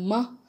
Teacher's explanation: In another case, the air is allowed to go into the both the oral and nasal cavities, but the active articulators check it in the mouth. For ma, two lips come together to form a closure and channelize the airflow through the nose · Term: nasal sounds